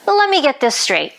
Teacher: Notice again how let me is pronounced lemmy in natural speech.